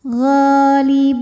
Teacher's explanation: Ghalibuna, bu dihukumi dengan mad tabi'i dhahiri sebab ada waw sukun yang sebelumnya diharokatil dhammah, maka huruf ba ini kita panjangkan 2 harokat saja